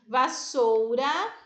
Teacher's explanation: o sou é a sílaba mais forte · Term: sílaba tônica